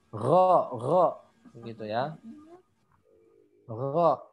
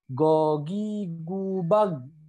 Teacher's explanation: dia terdengar seperti ada dengkurnya ya, kayak ada ngoroknya gitu. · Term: ghain